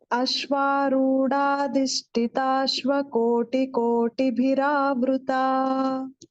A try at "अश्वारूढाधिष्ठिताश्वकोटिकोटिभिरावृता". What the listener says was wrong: So only thing was this Dha Mahaprana, Ashwarudha.